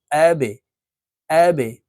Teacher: বা কলকুলার হরফ নিচের দিকে ধাবিত করে ধাক্কা দিয়ে উচ্চারণ করতে হবে দেখুন এখানে বার নিচে নিচের দিকে ধাবিত করে ত্রিভুজ চিহ্ন দেওয়া